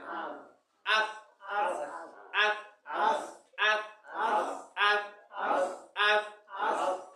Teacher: দাঁতের আগাল লাগলে আস হবে